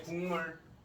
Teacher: 예, 이응으로 발음이 바뀌었어요. 자, 기역이 이응으로 바뀌었죠. 미음의 영향을 받아서.